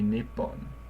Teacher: the T just kind of ran into the next consonant. So instead of nichipon, all it did was it doubled the sound after it to be nippon.